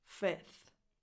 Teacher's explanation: you can also drop the F before the TH and just say 5th. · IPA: [fɪθ]